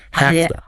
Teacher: The V in have often shifts to an F sound.